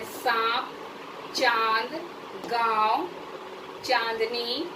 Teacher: ये अनुनासिक स्वर है। इसका उच्चारण मुंह और नाक दोनों की सहायता से लिया जाता है। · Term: चंद्र बिंदु